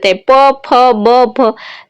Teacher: ઓષ્ઠ એટલે કે બે ઓઠ ઓઠ છે એ ભેગા થઈને ને બોલે